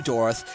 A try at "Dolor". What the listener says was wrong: Dolor. You said Dolorth.